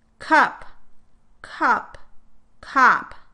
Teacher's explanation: notice how the second version sounds somewhat in between the uh and the ah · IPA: /ʌ/ vs. /ʌ̞/ (vs. /ɑ/)